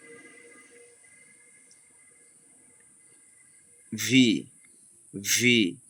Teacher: দাঁতের উপরে দাঁতগুলো আমাদের ঠোঁটের সাথে মিলেছে তেমনি ভাবে ঠোঁটের সাথে মিলিয়ে আমরা পড়বো